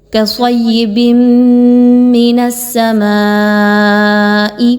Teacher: ما پر بڑی مد ہے اور حمزہ اسی کلمے کے آخر میں آ رہا ہے۔ مد واجب متصل ہے، 5 الف کے برابر اس کی ادائیگی کو رکھیں گے